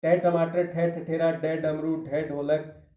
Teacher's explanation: मूर्धन्य तालु है जो कठोर तालु होता है कोमल नहीं होता है। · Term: मूर्धन्य व्यंजन